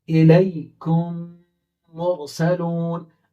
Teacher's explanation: جب میم ساکن کے بعد دوسرا میم آ جائے، یعنی دو میم جمع ہو گئے، میم ساکن اس کے بعد دوسرا میم آ رہا ہے، تو میم کے بعد با آ رہا ہے تو اخفا، میم کے بعد دوسرا میم آ رہا ہے تو دونوں کو ملائیں گے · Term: ادغام شفوی